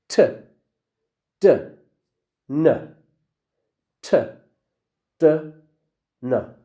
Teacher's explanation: so they are stop sounds but the place that we close the place that we close is not the lips it's the behind the upper teeth